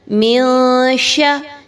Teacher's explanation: اخفا کریں گے، آواز کو چھپائیں گے ناک میں بدغنہ